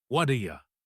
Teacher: hear what do ya as one block of sound instead of 3 separate words